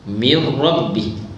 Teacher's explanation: Nun mati bertemu ra. Idgham bila gunnah min rabbi.